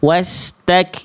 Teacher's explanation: Kalau ada ro sukun sebelumnya ada fathah, maka ro sukunnya harus dibaca tebal.